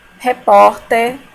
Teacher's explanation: A sílaba mais forte é no por. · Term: paroxítona